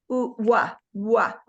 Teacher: the W in English we don't touch our tongue on our teeth we just say we like a fish